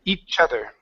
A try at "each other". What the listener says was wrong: Okay, give me a good TH there. So you don't want to say chudder, but chother.